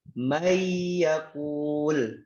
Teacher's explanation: nun ketemu ya dimasukkan, jadi mayyakul bigunnah, berarti ditahan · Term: idgham dengan gunnah